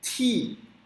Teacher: O T com I é ti, soprado.